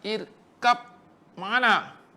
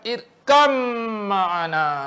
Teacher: Walaupun ba dengan mim satu makhraj. Sebabkan mim tu syadah. Mim syadah kan hukum mim syadah kena dengung.